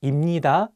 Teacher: if you pair 비읍 with 니은, you can pronounce 비읍 as 미음